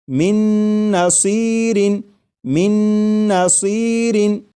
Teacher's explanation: میم کے بعد نون مشدد جو ہے اس کی آواز آئے گی اور غنہ کے ساتھ پڑھیں گے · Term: ادغام